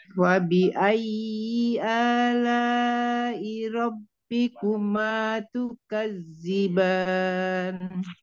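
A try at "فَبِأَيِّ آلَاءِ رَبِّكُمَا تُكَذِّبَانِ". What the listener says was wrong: Itu wajib panjang sampai 5. Panjangin lagi. Panjang.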